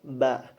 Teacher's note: ba termasuk makhraj syafawi atau kedua bibir. Kemudian dalam pengeluaran hawanya atau udaranya dia infijari, adanya letupan. Kemudian dia termasuk majhur dalam kategori pita suaranya.